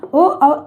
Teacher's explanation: कंठ और ओष्ठ दोनों से निकल कर आ रहे हैं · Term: कंठ ओष्ठ